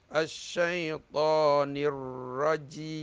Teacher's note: Ra yang bertasdik kena masukkan dia. Anggap alif lam itu tidak ada.